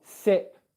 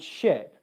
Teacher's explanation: For S, my lips are flat. For sh, my lips are rounded. · So what's happening is two things. Your lips are becoming rounded, and then your tongue is pulling further back in the mouth from the S sound.